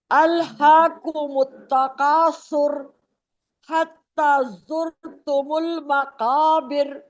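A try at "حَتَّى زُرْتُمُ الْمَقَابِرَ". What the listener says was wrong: حتیٰ کھینچیں اس کو.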